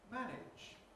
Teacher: So the /æ/ vowel has to be clipped, has to be squashed to fit in. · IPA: [ˈmæˑnɪʤ]